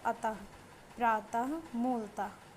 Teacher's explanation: इस ध्वनि का उच्चारण ह के रूप में किया जाता है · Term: विसर्ग